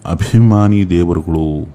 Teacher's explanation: ಅಭಿ ಅನ್ನೋ ಒಂದು ಪದವನ್ನ ಉಚ್ಚಾರ ಮಾಡುವಾಗ ಶ್ವಾಸ ತುಂಬಿಕೊಂಡು ಬರ್ತಾ ಇತ್ತು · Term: ಮಹಾಪ್ರಾಣಗಳನ್ನ